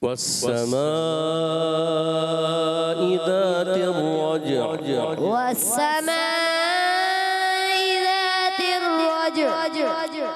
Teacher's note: سین کو تشدید ہے، ذرا پکڑنا ہے، رک کر ادا کرنا ہے. اور والسماء مسلسل ناک میں، میم میں ناک میں جائے گی آواز، میم میں، مگر جب اس کا الف ادا کریں والسماء، والسماء ما الف جو ہے کلیئر کریں گے.